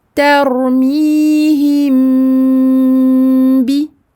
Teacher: On va cacher le mim derrière le ba. On va refermer les lèvres tout doucement, sans pression, sans aucune pression pour le mim sakin. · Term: al-ikhfa al-shafawi